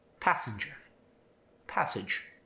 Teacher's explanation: the as sound in passenger and passage don't get that ah sound. They sound like passenger, passage.